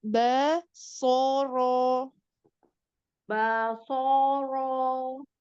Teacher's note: bnya coba untuk ditipiskan basoro jangan B terbawa dengan Shad